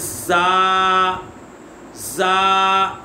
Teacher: آگے زا، زا، یہ حروف صفیریہ میں سے زا، سین اور صاد، ان میں سیٹی آتی ہے، سیٹی کی طرح آواز آتی ہے